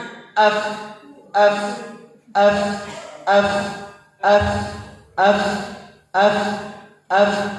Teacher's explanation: kita rasakan pada ujung gigi ketemu dengan bibir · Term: hembusan